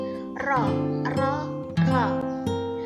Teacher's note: jahar, baini, dan takrir, yang artinya nafas tidak keluar, suara sedang dan bergetar.